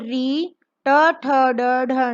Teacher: मूर्धा अर्थात मुख की छत, अर्थात हमारी जीभ ऊपर को छूती है।